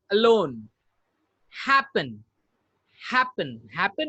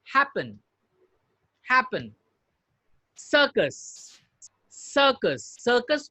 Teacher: हैपन में double पी के बाद जो ई है, ये ई जो साउंड कर रहा है काफी वीक साउंड है